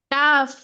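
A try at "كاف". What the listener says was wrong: কাফ বলা যাবে না। কাফে কত আলিফ টান আছে বলেন তো? চার আলিফ টান। তাহলে কি চার আলিফ টেনে পড়তে হবে?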